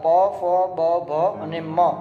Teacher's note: મ છે એ હોઠ અને નાકની મદદથી બોલવામાં આવે છે.